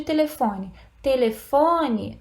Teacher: olha qual é a mais forte, é o fon.